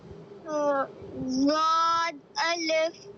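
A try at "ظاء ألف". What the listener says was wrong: ज़ुआद नहीं, ज़ुआ अलिफ। ज़ुआ ज़ुआ ज़ुआ अलिफ।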